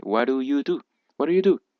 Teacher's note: la D se pronuncia como una R, ya que hay una T y una D, que para ambos casos, cuando están entre vocales, se pronuncia como R.